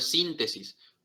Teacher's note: síntesis se carga en la ante penúltima sílaba